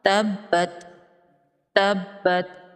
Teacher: یہاں پر تشدید ہے تو اس با کو ڈبل پڑھیں گے سختی کے ساتھ، تبت تبت، اور تا پر کوشش کرنی ہے کہ قلقلہ نہ ہو، تبت۔